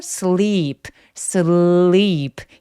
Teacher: 여기서의 sleep은 sleep, L 소리 또렷하게 내주시는 게 포인트고요. L 소리는 혀 끝으로 윗니 뒤쪽을 꾹 눌러내주셔야 돼요. sleep 아니고 sleep, sleep 이라고 소리 내주시고요.